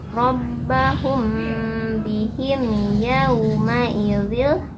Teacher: Yaunya huruf lin. Ada waw sukun didahului fathah, dibaca lunak.